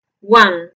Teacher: su nombre en el alfabeto fonético internacional es vocal semiabierta posterior no redondeada · el alfabeto fonético internacional es vocal semiabierta posterior no redondeada y produce un sonido similar a nuestra a pero no es igual porque es una a más cerrada y corta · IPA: /wʌn/